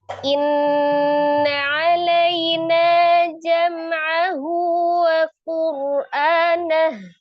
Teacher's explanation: Wajibul gunah akmalun paling sempurna dua sampai tiga harakat ditekan dan ditahan di suaranya dimasukkan ke rongga hidung.